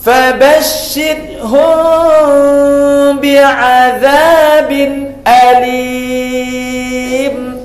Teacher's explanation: mim mati bertemu dengan ba, yang banyak qura' membaca tidak bertemu bibirnya. ikhfa syafawi ya.